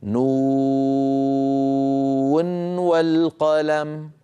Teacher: فأيضا نظهر هذه النون عند الوصل فنقول نون والقلم، لا ندغم برواية حفص عن عاصم من طريق الشاطبية. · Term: الإظهار